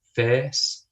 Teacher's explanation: For me, it's a, kind of quite a standard A. But in other parts of England, it will become more like an air sound, like face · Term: face vowel